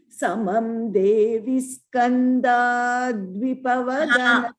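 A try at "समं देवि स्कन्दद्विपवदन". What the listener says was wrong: There, sorry to interrupt. We should not prolong a Skanda. Skanda Dvipa. Dvipavadana.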